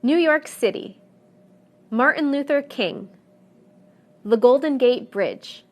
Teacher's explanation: the stress will always fall in the last segment